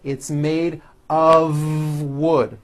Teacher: it's not a f wood with an unvoiced F it's all voiced and it's all connected